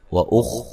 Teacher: خا کو موٹا ادا کریں گے، ہلانا نہیں ہے